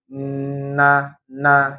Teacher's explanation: Nun itu ujung lidah bertemu dengan gusi ya gusi atas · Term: huruf nun